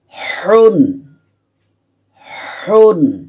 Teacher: হলকের মাঝখানে অর্থাৎ কণ্ঠনালীর মাঝখানে চাপ দিয়ে উচ্চারণ করতে হবে